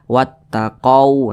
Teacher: Thobi'i di kotak warna merah seharusnya wa ini dibaca panjang tapi huruf wa di sini dibaca pendek Karena di depannya ada huruf ta Yang bertasdid